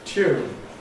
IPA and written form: tjuːn (tune)